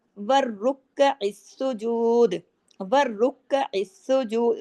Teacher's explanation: वर पे तशदीद है डबल रा है और मोटा भी करना है वर रुक काफ ज़बर काफ के ऊपर तशदीद है डबल काफ